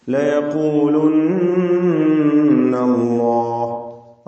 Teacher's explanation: അല്ലാഹ് എന്ന ഇസ്മുൽ ജലാല തഫ്ഹീം ചെയ്തുകൊണ്ട് ലാമിനെ ഉച്ചരിക്കണം.